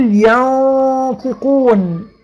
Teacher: أدي الطاء مفخمة، يبقى الغنة أيضا إيه؟ تفخم